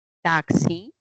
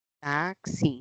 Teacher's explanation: La X representa la secuencia de fonemas, una K que es oclusiva y una S que es fricativa.